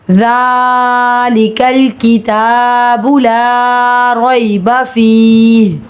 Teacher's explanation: زال نرمی والا حرف ہے، اس میں نرمی ہوگی، زبان دانتوں کے کناروں پہ لگے گی تو زال نرمی سے ادا ہوگا۔ · زال کے اوپر کھڑا زبر ہے، اشباعی حرکات 1 الف کے برابر کھینچیں گے۔ کاف باریک پڑھا جائے گا، لام ساکن ہے، آواز رکے گی۔ کتا میں تا پہ کھڑا زبر ہے، 1 الف کے برابر کھینچیں گے۔